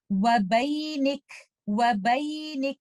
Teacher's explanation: Letter कैफ के ऊपर रुकना चाह रहे हैं तो आप इस पे हम्स के साथ रुकेंगे और आप इसको कुछ इस तरह से पढ़ेंगे वबैनिक वबैनिक।